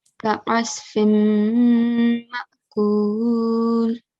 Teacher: we are merging the sound of the mim into mim mushaddad while making a slight nasal sound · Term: idgham